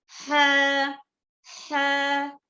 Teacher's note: In ha, make friction in the throat. Ha, okay? Ha, this is a heavy letter.